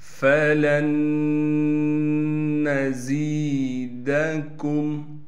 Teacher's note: لام کو ڈائریکٹ اس نون سے ملائیں گے، ادغام کے قاعدے سے یہ نون ختم ہو جائے